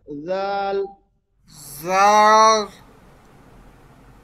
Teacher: নরম করে, সফট, জিহ্বার আগা উপরের দাঁতের আগার সঙ্গে লাগায়া, জাল। জাল।